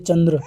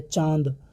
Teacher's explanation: अनुस्वार इसमें नाक से अधिक मुख से कम वायु निकलती है